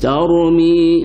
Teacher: ra tu mesti tebal lah. Itu dia panggil tafkhim ra, tebal ra.